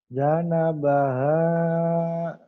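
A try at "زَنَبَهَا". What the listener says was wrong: jangan ja tapi za. Zana baha keras dikit. Za. Kalau ja ro titik ya ini dal titik za. Kalau za yang ini nih mesti ya. Ingat-ingat kalau za yang ini za bener. Z ini zero zero.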